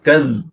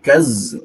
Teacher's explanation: Perhatikan huruf da, sifatnya ujung lidah digigit ya. Da, kad. Harus kita tekan, jangan sampai nanti tertukar dengan huruf za.